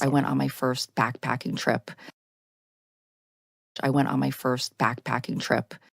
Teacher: the stress is on backpacking and trip is not stress so it's going to go lower in Pitch it's still not quite as low as the first thought group